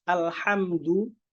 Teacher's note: Contohnya kalau dalam surat Al-Fatihah misalkan alhamdu, kan harusnya pakai ha. Alhamdu, makhrajnya ha dari wasatul halq, dari tenggorokan bagian tengah